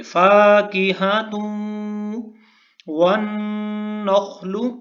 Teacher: تا کو واو کے ساتھ ملائیں گے کیونکہ واو کے اوپر شد ہے، تشدید ہے، تو ہم تا کو واو کے ساتھ ملائیں گے۔